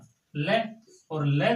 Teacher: हवा का जो प्रमुख वेग है वह जिव्या के अगल बगल से यानी जिव्या के आसपास से निकलता है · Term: पार्श्विक व्यंजन